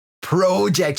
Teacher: You've got this long O in the middle that always throws me off when I speak to Australians.